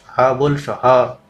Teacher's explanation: હ ઉષ્મ પણ છે એટલે હ જે છે એ મહાપ્રાણ છે